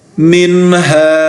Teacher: غنہ نہیں کیا جائے گا کیونکہ نون ساکین کے بعد حروف حلقی ہیں، لہٰذا یہاں پر اظہار ہوگا